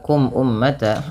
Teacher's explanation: mim mati bertemu dengan hamzah. Maka hukum tajwidnya yaitu izhar syafawi yang di mana suara mimnya dibaca dengan jelas